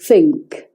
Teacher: So the word think, I think, they would say instead of think, they would say it like that, think, and the top teeth are on the bottom lip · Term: Cockney accent